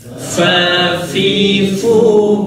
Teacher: fa perut bibir bawah bertemu dengan ujung gigi yang atas.